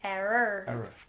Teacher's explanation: You have that AH sound instead of an ER at the end.